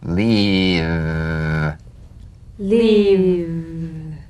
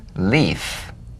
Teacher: if you don't have enough vibration in your V's they'll end up sounding like the F